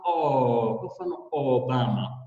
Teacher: Kwa mfano ukitizama mdomo wangu, ninaposema o, kwa mfano Obama, unaona kwamba ule mdomo wangu au midomo yangu imeviringwa, imechukua mkao au ule mduara au mviringo